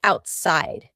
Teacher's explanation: The word outside has a T in the middle, but because this word is kind of two words put together, out and side, we're going to have a stop there in the middle.